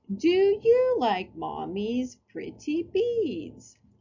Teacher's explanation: you yourself typically your facial expressions and your intonation change so they begin kind of like a sing-song talk known as child directed speech